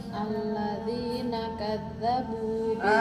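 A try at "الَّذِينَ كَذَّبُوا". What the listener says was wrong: Suaranya kadzabu. Lagi, belum ada suaranya itu. Suara dan udara mengalir.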